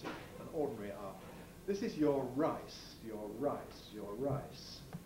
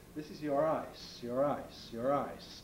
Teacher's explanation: the syllable initial r tends to be made more strongly than the syllable final one